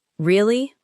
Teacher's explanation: You could say, Really? with a calm, falling tone to show that you are processing the news.